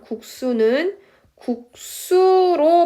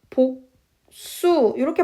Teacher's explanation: 복수 같은 경우도 복수 이렇게 발음을 하잖아요. 그냥 기역과 시옷이 만나면 무조건 그냥 스 발음으로 된소리로 발음이 되는 거예요